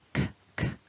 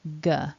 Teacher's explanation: When I make the k and the g, I'm raising the back of my tongue. The difference is when I make a k, k, I want air coming out of my mouth, whereas with the g, g, what we're focusing on is vibration in the throat.